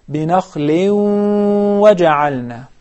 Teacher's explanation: You need to prolong the measurement of the ghunna in the case of the idgham, because this is idgham with ghunna.